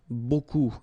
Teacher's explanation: you don't pronounce the final P, okay? And then you get this combination of vowels, E, A, U, and you get the sound O.